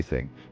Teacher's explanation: thing notice the difference no vibration right that's the key difference the unvoiced th doesn't use your vocal chords to make both sounds put your tongue tip between your teeth